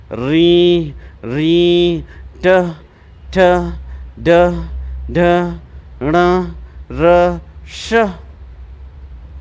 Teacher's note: ये वर्ण मुर्धा से बोले जाते हैं